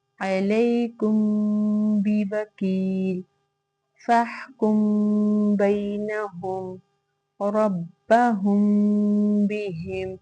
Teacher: میم ساکن کے بعد اگر حرف با آ جائے تو وہاں پہ ہم اخفاء شفوی کریں گے